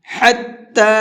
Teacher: ہا کو حلق سے نکال کر کے پڑھیں گے اور تا کو ایک الف کے برابر کھینچ کر کے پڑھیں گے۔